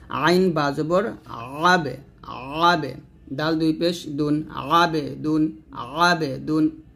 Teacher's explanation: আইন উচ্চারণ করতে গিয়ে হামজা আবার আদায় না হয়ে যায়, এটা আইনের চাপ দিয়ে বলতে হবে একটু